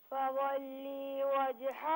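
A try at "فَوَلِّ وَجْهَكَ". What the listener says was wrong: بیٹا فولی میں لام کو بالکل نہ کھینچیں فولی وجہک میری بات پہلے میرا سنیں فولی وجہک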